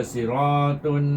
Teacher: Kalau kita baca siratun, bila kita panjang dia jadi dengung, maka tak boleh panjang. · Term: izhar